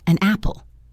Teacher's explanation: We don't say an apple, we say an apple. The n sound from an links directly to the a sound of apple. · The consonant sound essentially jumps over to the next word, making them sound like one. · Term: linking